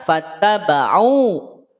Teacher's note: Tapi karena sebab bertemu dengan hamzah, hamzah yang ada setelah di lafadz fattaba'u artinya hamzahnya terpisah, maka panjangnya menjadi 4 atau sampai 5 harokat. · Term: mad jaiz munfasil